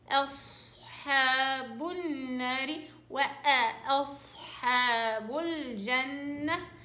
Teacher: سهلة. أنا أصحاب الهمزة رقيقة والحاء رقيقة، بتضل بس الصاد هي المفخمة. أصحاب النار وأصحاب الجنة، اللهم اجعلنا من أهل الجنة.